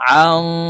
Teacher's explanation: নুন সাকিনের পরে ইকফার হরফ কাফ আসছে, তাই এই নুনকে নাকের ভিতরে লুকাইয়া গুন্নার সহিত পড়ব